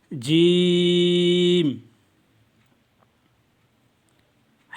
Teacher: زبان کا سینٹر جب آپ کا تالو کے سینٹر سے لگے گا تو یہ حروف ادا ہوگا۔